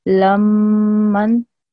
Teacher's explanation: So how I would say it is, lam, can you hear how I'm giving it 2 seconds? When I join the lam and the meme, because of this W-like shape, this mushaddad sign on top of the meme, I'm making this sound for 2 seconds. And that means that I'm stressing it, okay? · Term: stressing sound